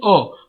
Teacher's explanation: जीभ के मध्य भाग के काम करने पर अ का उच्चारण होता है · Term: मध्य स्वर